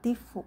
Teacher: Fu-nya kecil sepertiga harokat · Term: raum